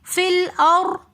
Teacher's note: فی الارضی میں فا کو ہم لام کے ساتھ ملا کر پڑھیں گے. فی الارضی رو ساکن اس سے پہلے زبر تو اس لیے ہم اس رو کو موٹا کر کے پڑھیں گے. فی الار رو کو ہم نے باریک نہیں کرنا.